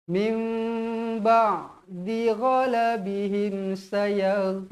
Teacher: bacaan dia mestilah kita punya mulut ni dirapatkan mim dengan kadar dua harakat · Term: iqlab